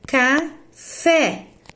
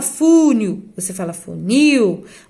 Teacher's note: o acento tônico recai na última sílaba, ou seja, que a sílaba tônica é a última da palavra. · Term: oxítonas